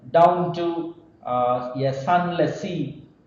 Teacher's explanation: In the case of here, you again you can have multiple forms of rhythm down to a sunless sea, um, down both down and to they may not be stressed, but in this case down as it comes first we may give stress on down